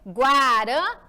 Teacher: Já vimos a palavra guaraná, já conhecemos que na última sílaba, ela fica a mais forte, oxítona.